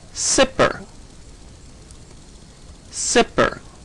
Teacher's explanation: if you say zipper with no voicing or phonation you're really only saying sipper